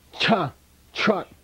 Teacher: it's called a retroflex in linguistics this is called retroflex